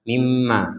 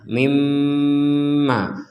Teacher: Dengung dulu itu di rongga hidung kita, baru kita bilang ma.